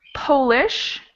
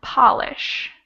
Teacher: That O sound changes, and you can tell by the shape of my mouth. When I say Polish, my mouth becomes kind of a small O. And when I say polish, my mouth is much more open.